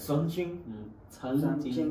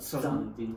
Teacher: the tongue is under the tip of the upper teeth.